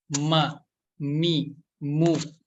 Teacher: huruf mim yaitu keluarnya dari asyafatain, yaitu dari kedua bibir kita.